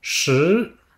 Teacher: c'est le ton montant, donc on part du milieu entre le grave et l'aigu, et on monte vers l'aigu.